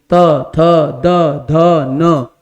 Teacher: दंत का मतलब है दांत, दांत में आपकी जीभ स्पर्श करेगी